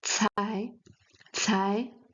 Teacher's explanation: some air is going out from our mouth when pronouncing cai